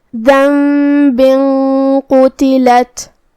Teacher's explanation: تو ہم یہاں غنہ کو بھی بھاری آواز میں ادا کریں گے